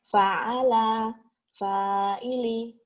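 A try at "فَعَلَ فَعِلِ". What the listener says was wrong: Pendek semua. Fa'ala, baru panjang. Fa'ala, fa'ili.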